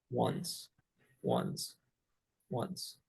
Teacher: the N is like the same location so it's kind of Shifting between them it just sounds like there's a t in there